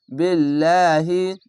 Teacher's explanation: খাজা পড়বেন এবং আল্লাহ লেখা থাকলে তার ডান পাশের অক্ষরটি দেখবেন ডান পাশের অক্ষরের নিচে যদি জের বা যে কোন জিনিস আসলে পাতলা করে লাহি